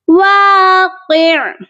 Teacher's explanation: اگر ہم کرتے ہیں سٹاپ تو عین کی 2 زیر کو ہم نے کر دینا ہے ڈراپ، اور عین ساکن ہوگا تو ہم کریں گے قاف عین زیر قع، ایسے کر کے یہاں پر وقف ہوگا، واقع۔